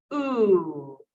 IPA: u: